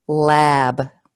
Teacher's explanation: this vowel, a, before the b, is longer